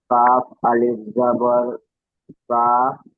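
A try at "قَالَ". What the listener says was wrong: কাফ নেই, ওটা কফ বলতে হবে, দুই নক্তা কফ।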